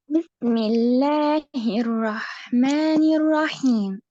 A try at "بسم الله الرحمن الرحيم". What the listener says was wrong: نمد الحاء، نمد الحاء، لا نقول بسم الله الرحمن الرحيم. يعني نعطي للحاء حقها وللميم حقه، فنقول بسم الله الرحمن الرحيم. الرحيم، ولا نقول رحيم.